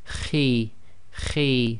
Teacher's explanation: heavy letter but not completely full mouth